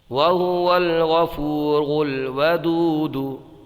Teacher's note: یہاں پر را کو پر پڑھیں گے